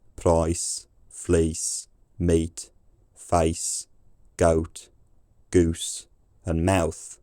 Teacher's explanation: In the modern West Midlands accents often connected with Shakespeare, these have become quite distinctive wide diphthongs, gliding vowels where the sound of the vowel changes a lot during its articulation